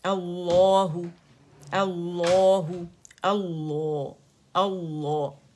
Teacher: لام التعریف کے بعد ہمارے پاس شمسی جو لیٹر لام ہے اس میں لام التعریف مرج ہو گیا ہے ، تو وہ کیا ہو گیا ہے، مشدد تشدید کے ساتھ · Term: لام شمسیہ